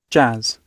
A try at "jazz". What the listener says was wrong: Khi cô lại nghe thành âm, cô lại đọc nhầm nên âm A dài. Jazz, jazz.